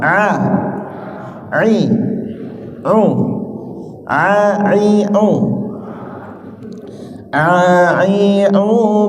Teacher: ain ini agak ditekan, berasal di tengah, tapi dia tidak keluar hawanya